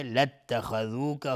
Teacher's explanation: لاتخذوک خا از حروف استعلاس غلیظ تلفظ میشه